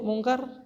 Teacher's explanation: ikhfa bertemu huruf kafnya tipiskan saja